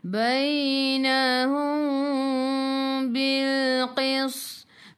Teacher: Mim bertemu dengan ba ikhfa syafawi dengan 2 harakat. Nak rapatkan bibir boleh, jangan tekan. Kalau nak renggangkan bibir seolah-olah ada sehelai kertas di tengah-tengah.